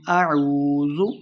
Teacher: واو مدہ ہو رہا، 2 حرکات لمبا کرنا ہے